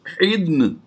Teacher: नून साकिन हो जाएगा वक़फ़ की वजह से और दाद पहले ही साकिन है, तो इन दोनों को हा के साथ मिला देंगे। हा दाद नून ज़ेर हिदन, यानी हमने दोनों को मिलाकर पढ़ दिया।